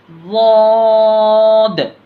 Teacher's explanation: अब उसके बाद देखिए ज़ाद, ज़ाद को भी मोटा पढ़ना, जितना सौद को खींचे उतना ही इसको भी खींचना, और इसको क्या है, ज़बान की करवट उसके मुकाबिल दाढ़ों की जड़ से लगाकर ज़ाद को पढ़ा जाता, ज़बान की जो बाजू वाले हिस्से है उसकी करवट को जो है ना ऊपर के दाढ़ों में लगा के पढ़ना है, ज़ाद ऐसे करके, आखिर में दाल की आवाज़ जो है ना टकरा के वापस आना।